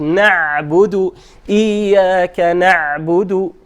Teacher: So ayn is in between, not like hamza, not like ghain.